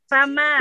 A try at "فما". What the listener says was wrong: Lahja Indonesia tafkhim. Lahja Indonesia tafkhim. Hada khata. فما لهجة العربية ترقيق فما